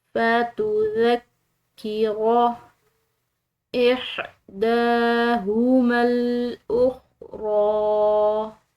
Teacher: ذال نرم حروف میں سے ہے، اس کو ادا کرتے ہوئے کسی قسم کی سیٹی کی آواز نہ ہو، نہ ہی کسی قسم کی سختی اور شدت ہو، بالکل نرمی سے ادا کرنا ہے.